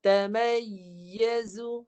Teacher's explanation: Rumah huruf ya. Tengah lidah tinggikan. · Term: naik tengah lidah